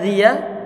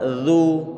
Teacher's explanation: Sekarang perhatian, dibuka zi. Kalau zi berarti dibuat meringis. Dibuat terbuka zi. Ini meringis ya, zi ya. Kemudian zu dimonyongkan.